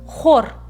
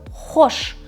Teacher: х деген дыбыс жуан түрде бізде қазақ тілінде естіледі